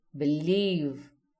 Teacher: You'll notice leave is louder and longer. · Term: stressed